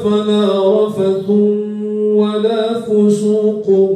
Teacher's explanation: rafatha dibaca rafathun, fusuqa dibaca fusukun, sehingga ada idgham bi gunnah